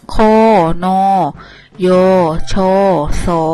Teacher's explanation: สระโอซึ่งเป็นสระเดี่ยวนะคะเสียงยาว